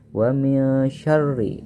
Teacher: nun sukun bertemu dengan huruf syin maka ini disebut dengan Ikhfa jadi membacanya harus samar